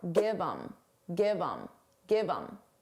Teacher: Get rid of the H and it will sound like im. But you can combine it to the word before.